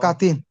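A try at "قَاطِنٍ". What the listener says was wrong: অর কতিন, কাতিন না, কাপ হ্যাঁ, অর কতিন। অর কতিন, লম্বা নাই কোনো। অর কতিন।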